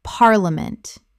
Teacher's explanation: Three syllables in natural speech. The middle syllable collapses dramatically.